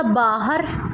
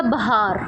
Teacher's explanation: ਜਦੋਂ ਕੋਈ ਵੀ ਲੱਗ ਹਹ ਤੋਂ ਪਹਿਲਾਂ ਲੱਗੀ ਜਿਵੇਂ ਹਹ ਤੋਂ ਪਹਿਲਾਂ ਕੰਨਾ ਲੱਗਿਆ ਹੋਇਆ ਹ ਤਾਂ ਉਹ ਹੋਊਗੀ ਉੱਚੀ ਸੁਰ